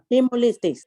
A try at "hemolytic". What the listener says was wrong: There's no S. There's no S at the end. Don't put the S. Hemolytic. No S. Don't put the S. Hemolytic.